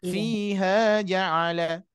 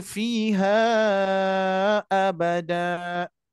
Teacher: dibaca panjang karena pertemuan Mad dua harakat bertemu dengan Hamzah atau Alif berharakat